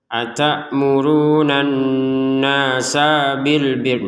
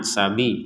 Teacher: Jadi nun bertasydid kita dengungkan, kemudian nunnya ini harokatnya fathah, ada alif, kita panjangkan dua harokat. Untuk sin harokat fathah langsung digabungkan ke ba, ya.